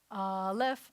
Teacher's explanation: the first letter is alif which sounds like it starts with a vowel it doesn't it starts with a glottal stop so which is kind of a silent consonant but it's a · alif which sounds like it starts with a vowel it doesn't it starts with a glottal stop so which is kind of a silent consonant but it's a consonant nonetheless